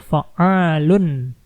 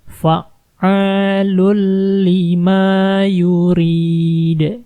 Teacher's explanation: 'Lun' di sini menghilang. Masuk langsung ke lam tashdid di sini. Jadi “lul fa’alul lima yurid”.